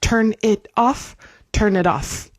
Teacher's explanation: So it happens a lot when the next word begins in a vowel that we blend these sounds together. So it sounds like one long word.